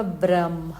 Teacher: അപ്പൊ ആ ലാസ്റ്റ് അനുനാസിക ആ ഇത് അതിൻ്റെ കൂടെ ഹ വരുമ്പം ആദ്യം നമ്മൾ അനുനാസിക പറഞ്ഞിട്ട് വേണം ഹ പറയാൻ